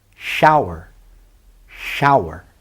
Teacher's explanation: the first o is stressed the last e we have consonant vowel consonant but the last e is not stressed it's an unstressed vowel